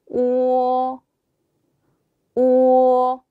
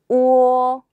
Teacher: 5로 시작해서 약간 어로 끝나는 느낌